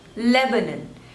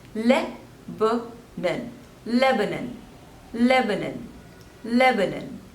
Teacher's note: Next is Lebanon, Lebanon. So there are three syllables and the stress is on the first one.